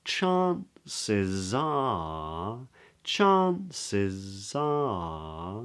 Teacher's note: that little up-down that's called a circumflex inflection